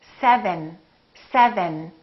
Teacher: then my tongue is touching right behind my upper teeth